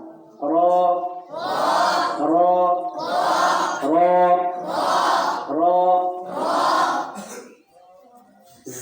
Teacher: অনেকে গোল করে বলে র, গোল করা যাবে না।